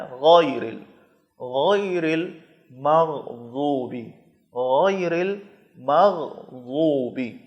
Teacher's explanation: غین حلق کے اوپر والے حصے سے، جو منہ کی طرف ہے، جو حلق کا ابتدائی حصہ ہے وہاں سے غین ادا کرنا ہے، اس کو گاف کی طرح نہیں پڑھنا ہے، غیر نہیں پڑھنا ہے، غیر غیر المغضوب، غیر المغضوب۔